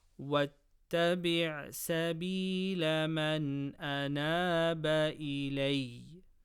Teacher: Noon Sakina before Hamza, from Hamza Ha, Ain Ha, Ghain Kha, Idhar, no Gunna.